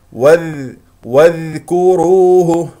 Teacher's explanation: الذال هنا ساكنه رخوه